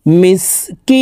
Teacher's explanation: কি এখানে তিন আলিফ টেনে নুনকে সাকিন করতে হবে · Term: মধ্যে আরজি